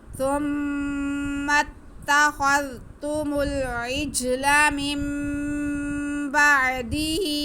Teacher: دال کو کھینچنا نہیں ہے لیکن ہا کو ہم ایک الف کے برابر کھینچیں گے کیونکہ کھڑا زیر یا مدہ کے برابر ہوتا ہے یا قائم قام ہوتا ہے، ایک ہی بات ہے.